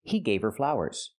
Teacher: You don't hear the H in her because her is not a stressed word.